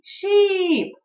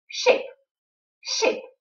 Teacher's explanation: Просто здесь в серединке долгое и sheep, а здесь краткое и ship